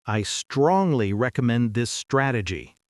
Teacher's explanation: you used authority intonation, lowering your pitch at the end of the sentence